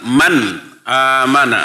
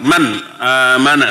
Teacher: Man amana nun mati menghadapi alif. Eta idhar dibaca jelas, teu kaeng dengung, teu kaeng dua harokat, kedah saharokat.